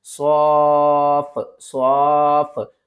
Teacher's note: کس طرح، صاد فا مد کھڑا زبر صوف، یعنی کہ بڑی مادہ ہے، 5 الف کی مقدار کھینچ کر پڑھیں گے